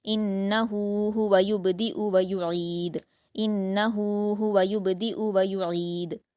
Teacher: ویعید میں آپ کو عین کی آواز ظاہر کرنی ہے حلق سے اور دال پر قلقلہ کریں گے